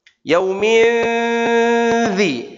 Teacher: ujung lidah langsung menempel ke dua gigi seri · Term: ikhfa